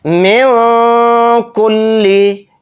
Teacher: نون کی آواز کو ناک میں چھپا کر اخفا کے ساتھ پڑھیں گے ، اخفا اس طرح سے کریں گے من کلی، اس طرح